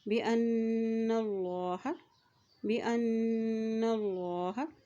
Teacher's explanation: यहाँ देखिए हमज़ा की ज़बर को नून के साथ मिलाते हुए पढ़ेंगे, नून के ऊपर शद है और जब भी नून के ऊपर शद आ जाता है तो वहाँ पर गुन्ना अदा किया जाता है। और देखिए अल्लाह के नाम से पहले ज़बर है तो अल्लाह का नाम यहाँ पर मोटा अदा किया जाएगा